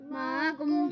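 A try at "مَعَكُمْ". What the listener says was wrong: معکم، حمزہ نہیں پڑھیں گے عین پڑھیں گے، معکم،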